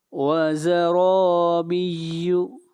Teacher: را کو موٹا پڑھا جائے گا اور را کے اوپر فتحہ ہے